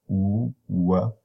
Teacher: So w is a voiced bilabial, u, w, and it is the single sound that has two placements in English.